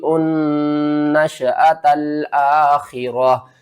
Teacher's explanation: یہاں پر آپ نے اس یا کو چھوڑ دینا ہے، حمزہ کو نون سے ملانا ہے، نون مشدد ہے غنہ کریں گے، درمیان میں الف اور لام کو چھوڑ دیں گے۔